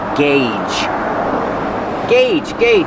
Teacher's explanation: Use the hard g and the long A, like say and pay.